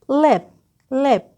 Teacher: The tip of the tongue is just behind the teeth, and the back of the tongue is fairly low. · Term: clear variant l